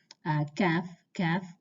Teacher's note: Kaf is just a little bit further towards the outside, next to the articulation point of the qaf. Kaf, kaf, and you're also using two different sides of your tongue in the back.